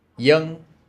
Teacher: here's another name y so that's actually spelled with a v in the southern dialect that V makes a y sound y the weird thing is it doesn't do that every single